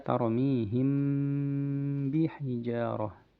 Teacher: jelas ya bunyi mimnya ya, disertai dengan dengung kemudian dikeluarkan huruf ba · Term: intibaq syafatain